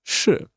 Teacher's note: this is fourth tone. It's like you scold someone.